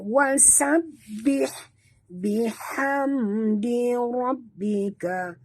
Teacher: Mim mati bertemu dal. Sini tak boleh dengung. Izhar syafawi.